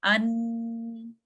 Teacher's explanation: आगे से तो आपकी ब्लॉकिंग हो गई है लेकिन गुन्ना से जो है आपकी पार्शियल रनिंग हो रही है साउंड की।